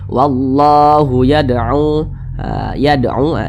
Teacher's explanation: Wallahu yad'u, yad'u, ini dipantulkan lagi, ini cara bacanya dipantulkan. Huruf dal ini dia sukun. Nah, di samping huruf qalqalah itu ada 5, salah satunya huruf dal, maka dipantulkan cara bacanya. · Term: qalqalah kecil